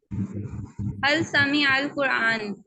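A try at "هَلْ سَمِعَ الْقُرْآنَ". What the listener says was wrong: कुराना देखिए यहाँ पर अब हम जेर जबर को कर रहे हैं ना, तो आपने जरूर इसको अदा करना है।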